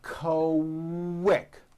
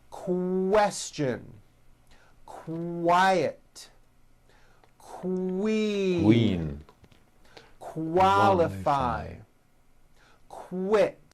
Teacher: Q sounds are made with the K sound, k, k, and the W sound, w, put together. · the word quick is pronounced with a K and a strong W sound